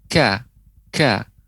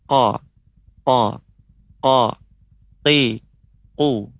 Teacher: Dan sifat dari kaf ini mengeluarkan nafas, mengalirkan udara.